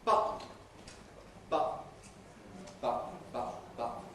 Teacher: in the case of the voiceless ones, it's acceptable to use a glottal stop instead, and to say button, button, button, button, button.